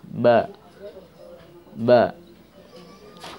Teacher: Bismillahirrahmanirrahim. Ba, ya, keluarnya huruf dari syafatain, bertemunya dua bibir atas dan bawah. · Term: huruf ba